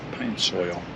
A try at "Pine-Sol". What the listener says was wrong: It's not pine soil. There's no I. No. You're not talking Spanish. You're not talking Spanish.